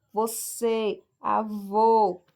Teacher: Água, o som do A é mais aberto. E o acento circunflexo indica que aquele som ali é mais fechado.